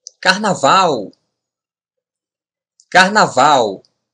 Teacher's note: when the consonant Al is the end of a word or syllable we pronounce it like the letter W in English